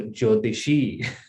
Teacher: First e is short, second e is long, so jyotishi. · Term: long ikara